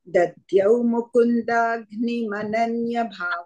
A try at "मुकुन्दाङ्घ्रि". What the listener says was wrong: Agni no, gri. Angri is a feet. Angri. Angri is a pada. Mukunda is a lotus. Mukundangri. Mukundangri. Angri. No, and also ng. Also one anuswara ng. Mukundangri. Anuswara is there.